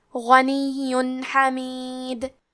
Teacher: آخری میں یا پہ تشدید ہے تو ہم 2 حرف کے برابر یا کو پڑھیں گے، اور کیونکہ اس پہ تنوین پیش ہے پھر حرف الحاء آتا ہے کلمت حمید. · ہم تنوین کو ظاہر کریں گے اور اسے نون ساکن پڑھیں گے اور بغیر غنہ سے یہ حکم کو ادا کریں گے